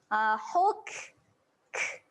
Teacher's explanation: Kaf mati dia kena keluar angin.